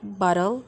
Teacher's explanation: In a word like bottle, the weak second syllable contains no vowel at all, but consists entirely of the consonant L. We call this a syllabic consonant.